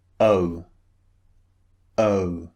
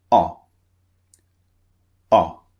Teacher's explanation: I'm sure you noticed it. One of them, the first one, is two vowels pushed together, as we've seen before. The second sound is very, very short and very brief. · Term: two vowels squeezed together